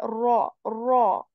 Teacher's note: My mouth is full. And how that is full? I raise the back part of my tongue to do that and say ya rau. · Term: heavy